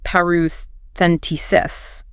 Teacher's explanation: Pronounced parouscentesis. Five syllables, stress on the T. · 5 syllables, stress on the T.